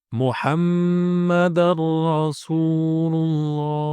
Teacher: Mad Thobi'i jadi panjangnya dua harakat dua harakat saja tidak boleh lebih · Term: mad tabi'i